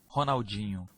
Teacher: the NH sound in Portuguese is a softer sound, and it has a nasal quality to it.